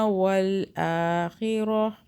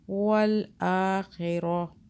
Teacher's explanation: تا کو ہاں میں بدل دیا رکنے کی صورت میں